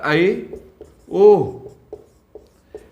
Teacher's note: अर्धविवृत वे स्वर हैं जिनके उच्चारण में मुख का आधा भाग खुलता है